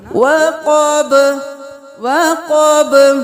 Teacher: قاف کو موٹا پڑھیں گے، با کو قلقلہ